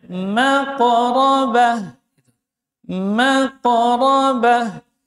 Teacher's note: Ujung lidah di ujung gisri atas huruf rakhawah dan jar maq. Mimnya tipis yang tebal huruf qof-nya ya. Maqrabah maqrabah pantulannya tetap mengalir.